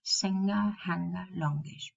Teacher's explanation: when we add a suffix, for example, singer, to transform the verb into a noun, we have to pronounce singer. We don't have to pronounce the g. Singer. Just the schwa. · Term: velar nasal